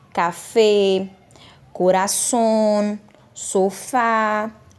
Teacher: essas palavras elas têm a última sílaba tônica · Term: agudas